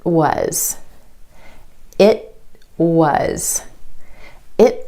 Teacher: the tongue goes up for the T at the end of the word it holds there and then straight into the W sound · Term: held T